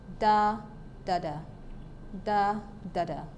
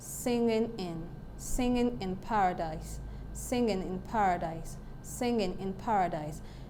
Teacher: and then this one is annapest that too ductile is simply one stressed syllable followed by two unstressed syllables